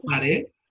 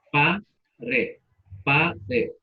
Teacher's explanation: se pronuncia pared con la fuerza en la última sílaba